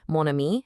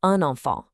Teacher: that N sound just gets pronounced to form the bridge. No crazy sound changes here, just a really clean and simple connection. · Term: nasal N